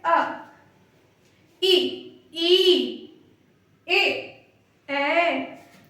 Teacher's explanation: जीभ का जो अगला हिस्सा है वो इनको बोलने में काम कर रहा है